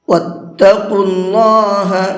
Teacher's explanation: قاف کو منہ بھر کے پڑھیں گے اور اللہ کے لام کو بھی منہ بھر کے پڑھیں گے، اس لیے کہ اللہ کے لام سے پہلے پیش ہے، اللہ کے لام سے پہلے پیش ہوتا ہے تو اس اللہ کے لام کو منہ بھر کے پڑھتے ہیں۔